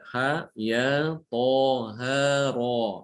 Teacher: Mad yang ini yang hayyun tohir atau hayyun tohur itu tergolong mad tabi'i atau mad asli yang dibaca 2 harokat, tidak boleh lebih. · Ha, ro ini dibaca 2 harokat saja, tidak boleh lebih ya.